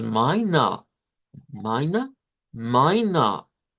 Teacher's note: Las dos suenan a mine, hasta ahí son iguales, pero en una hacemos ishba diciendo mina y en la otra decimos mina, mina, mina. Es como que le diéramos un poquito de más fuerza a la última vocal en la segunda palabra.